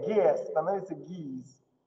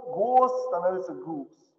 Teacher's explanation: Узкое э уезжает наверх, и узкое о тоже уезжает наверх.